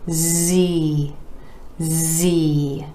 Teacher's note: Again, our E vowel sound coming after the consonant Z, made just like the consonant sound S, except you're adding your voice. This is a voiced sound.